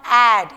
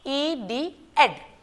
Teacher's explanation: You will not pronounce like A. It is not ad, it is ed. You have to pronounce it short.